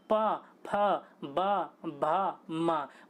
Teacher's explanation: बोल के देखिए आपके जो होठ होंगे ना दोनों चिपकेंगे फिर खुलेंगे, चिपकेंगे खुलेंगे, इसलिए इनको ओष्ठ कहा जाता है।